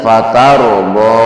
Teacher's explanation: fatarubo di situ panjang dua harokat mad tabi'i